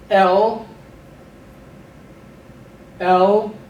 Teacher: keep the schwa short